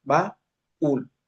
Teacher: vocales se separan en sílabas diferentes. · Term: hiato